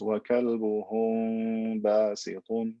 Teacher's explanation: the letter of ba comes from the same makhraj, the same point of articulation as the mim. So it's almost impossible to pronounce the mim clearly. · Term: ikhfa shafawi